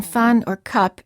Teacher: the sound as in fun or cup is a neutral vowel, meaning that everything in your mouth is relaxed and the lips are just very slightly open